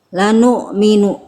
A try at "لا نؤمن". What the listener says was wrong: Tadi Bunda baca di sini jadi kayak ain la nu'minu. Ini hamzah ya. Hamzah sukun. Jadi bunyi hamzah jangan tertukar dengan ain. Ya, jangan wa ma lana la nu'minu aja ada nu' ya, tapi wa ma lana la nu'minu diputus. Di-cut bunyinya, dipotong. La nu'minu gitu ya.